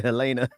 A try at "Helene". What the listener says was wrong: Helene. It's Helene. The E at the end.